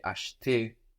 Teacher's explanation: And that middle E, that E in the middle, is a bit swallowed. It's very weak, depending on the dialect and the speed of the sentence and, you know, what words are surrounding it.